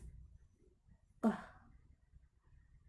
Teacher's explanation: The next is K. The place of articulation is velar. The manner of articulation is plosive. The K sound include voiceless.